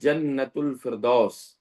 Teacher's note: تو جیم جب استعمال کرتے ہیں ہم تو یہ زبان کا جو بیچ کا حصہ ہے اوپر کے تالو سے لگتا ہے